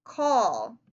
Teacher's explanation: feel your throat as you make that last sound you should feel it vibrate that means the sound is voiced